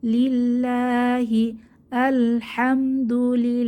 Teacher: লাম জের লিল আল্লাহর লামের এই যে আগের হরফ এই যে লামে জের আছে এজন্য আল্লাহর লামটা পাতলা করে পড়তে হবে